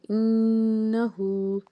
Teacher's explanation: اس کے بعد ہے انہو، نون ساکن کے اوپر آپ کو تشدید کا سائن نظر آ رہا ہے، یہاں پہ غنہ ہوگا، نون کو 2 بار ادا کریں گے، خوب غنہ کریں گے، اور ہا کے اوپر الٹا پیش ہے، 2 حرکت کے مطابق اس کو ہم نے کھینچ کے ادا کرنا ہے۔